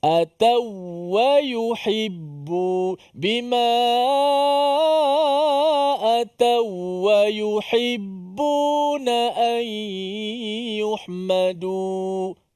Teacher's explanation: Tak ada pula tanwin. Jadi sini tak ada dengung. Dia masuk saja. Waw tu masuk saja dalam waw kedua tanpa boleh dipanjangkan.